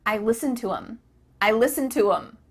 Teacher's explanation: The word them has the th cut out, and instead you're saying them.